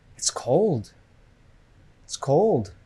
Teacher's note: the stress is on cold it's a Content word